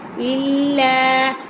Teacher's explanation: لام کو سختی سے پڑھیں گے، اس کے ساتھ الف مدہ ہے، اسے لمبا کریں گے